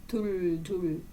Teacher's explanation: 둘의 디귿을 윗 잇몸에서 나는 소리예요 그래서 혀끝을 잇몸에 닿게 해서 나는 소리는 둘만 해당하는 거죠 그죠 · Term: 윗 잇몸 소리